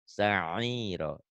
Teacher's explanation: Ain itu kayak orang yang, apa ya, nelen nelen sesuatu keselak gitu.